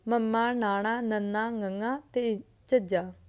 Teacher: ਜਦੋਂ ਮੂੰਹ ਪੋਲ ਦਾ ਰਸਤਾ ਬੰਦ ਹੋ ਜਾਂਦਾ ਏ ਅਤੇ ਨੱਕ ਦੇ ਰਸਤੇ ਤੋਂ ਹਵਾ ਆਉਣੀ ਸ਼ੁਰੂ ਹੋ ਜਾਂਦੀ ਹੈ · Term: ਨਾਸਕੀ ਵਿਅੰਜਨ